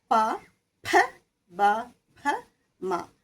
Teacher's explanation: രണ്ടു ചുണ്ട് മുട്ടുമ്പോഴാണ് പ എന്ന അക്ഷരം ഉണ്ടാകുന്നത് ശബ്ദം ഉണ്ടാകുന്നത്. അപ്പ പ ഭ ബ ഭ മ ഈ അക്ഷരങ്ങൾ മുഴുവനും · അങ്ങനെ ഈ വായു പുറത്തേക്ക് കിടക്കുമ്പോൾ ചുണ്ടുകളുടെ അവിടെ വെച്ചിട്ട് തടയപ്പെടുന്നുണ്ട്. അതായത് പ, രണ്ട് ചുണ്ടും മുട്ടുമ്പോഴാണ് പ എന്ന അക്ഷരം ഉണ്ടാവുന്നത്, ശബ്ദം ഉണ്ടാവുന്നത്.